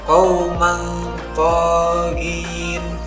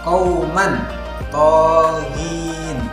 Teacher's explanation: maka bunyi tanwin dibaca dengan samar dan mendengung mendekati huruf to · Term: ikhfa